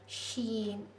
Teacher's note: جو درمیانی جو زبان کا حصہ ہوتا ہے وہ اوپر والے کو لگتا تو نہیں، تھوڑا سا گیپ ہوتا ہے